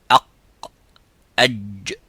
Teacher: So in the wasat al-lisan, which is the middle part of the tongue, the middle part touches the roof of the mouth and the sound stops as exactly as the qaf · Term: jim